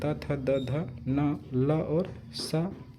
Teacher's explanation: जिनका उच्चारण ऊपर के दांतों पर जीभ लगने से होता है उसे दंत कहते हैं।